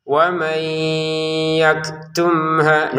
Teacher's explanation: Nun sukun bertemu ya baca dengan dengung.